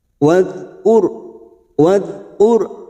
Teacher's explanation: ada huruf ro sukun yang didahului dumah kita baca tafkim atau tebal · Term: ro tafkim